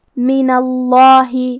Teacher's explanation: کلمت من کے آخر میں نون پہ زبر ہے، پھر لفظ الجلالہ ہے تو ہمیں یہاں بھی لفظ الجلالہ کے لام کو موٹی آواز میں پڑھنا ہے